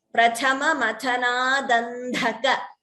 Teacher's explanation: Dha is Mahaprana. The first Da is Alpaprana. Second Dha is Mahaprana.